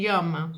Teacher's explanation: E uma que é considerada palatal, que é o Lh, né? De lhama